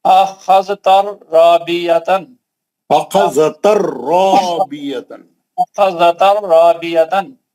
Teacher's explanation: तनवीन का इदगाम बिला गुना हर्फ रा